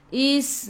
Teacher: Sin ada sukun sifat huruf sin safir kena bunyikan